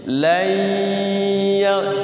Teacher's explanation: nun sukun ketemu ya, idgham bigunnah